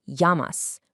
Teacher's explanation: in Spanish, a double L actually creates a Y sound, so it's pronounced llamas.